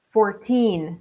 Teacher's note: the second syllable is stronger than the first oh we have a reply here great job 6:45 · another number fourteen where the second syllable is emphasized more okay one four is fourteen the second syllable is stronger than